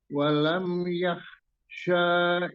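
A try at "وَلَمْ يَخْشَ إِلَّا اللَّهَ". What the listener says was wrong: Itu bukan eh Alif maksurah ya Jadi tidak boleh walam yaksya bukan itu bukan alif bengkok itu memang huruf syin jadi dibaca pendek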